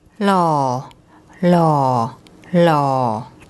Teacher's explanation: Although there's an H at the front, the word actually starts with an L sound. · And it begins with an L sound, but for tone purposes, we use this hoar heap, which is high class. So a high class consonant, and the first tone mark makes a low tone.